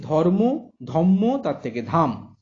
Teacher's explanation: পদমধ্যস্থ যুক্ত ব্যঞ্জনগুলো একক ব্যঞ্জনে পরিণত হয়েছে।